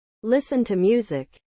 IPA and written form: ˈlɪs.ən tuːˈmjuː.zɪk (Listen to music)